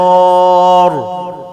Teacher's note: وفخم الصاد ومعها الألف